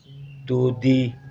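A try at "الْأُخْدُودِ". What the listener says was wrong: Du panjang. Dudi.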